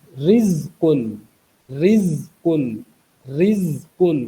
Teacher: इसकी इब्तदाई आवाज़ बारीक है क्योंकि रॉ के नीचे ज़ेर है